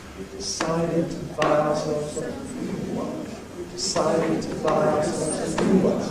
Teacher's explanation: On buy, there is no pitch prominence. We keep the same pitches on the surrounding syllables. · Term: rhythmic beat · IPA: We've deˈcided to ˚buy ourselves a ˋnew one.